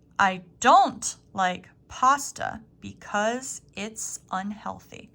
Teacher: you are going to stress don't in this phrase